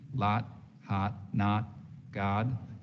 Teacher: The lot vowel is going to be very open, fronted, no lip rounding in a New York accent.